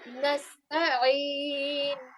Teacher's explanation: this ayn is also one of your throat letters, and the sound comes from the middle of your throat